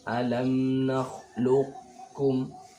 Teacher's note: Ini diidghamkan, cuma ini masuk pada idgham naqis. Sifat qaf itu harus masih ada sifat idbaqnya, karena antara qaf dan kaf itu lebih kuat qaf.